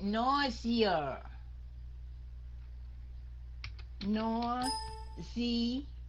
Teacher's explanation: cái âm s đó đọc thành âm z